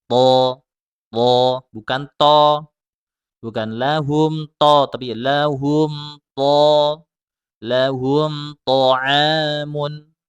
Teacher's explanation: Huruf ta di mana makhrajnya? Ujung lidah ada di pangkal gigi seri atas. Kemudian kemudian pangkal lidahnya itu dinaikkan ke langit-langit supaya tebal. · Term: huruf ta-nya ditebalkan